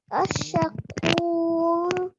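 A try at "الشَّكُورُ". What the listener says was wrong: Very good. Well done. Really good hardening on that sheen there.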